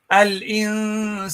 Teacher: so you hold the noon in the ikhfa state here · the ghunnah that comes from the nose as a result of the rule that's called ikhfa